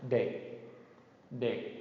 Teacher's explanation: and then de, a short low tone